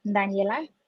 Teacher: it's like a th in the front instead of a d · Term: th sound